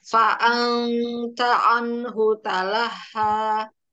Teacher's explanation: Iya, di gusi. Ya, jadi faan itu sudah langsung lidah kita posisikan di huruf ta